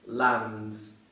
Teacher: In this case, we didn't pronounce the letter D.